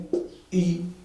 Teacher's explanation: और ये कौन कौन से हैं, है ना, ये कौन कौन से हैं देखिए जरा, ये हैं आपके, जब आप बोलेंगे ई, जीभ का आगे का भाग देखिए या तो उठ जा रहा है या जीभ या तो हल्की सी आगे आ जा रही है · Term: अग्र स्वर